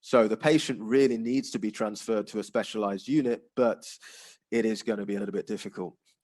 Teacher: that kind of falling tone often expresses something which is which is negative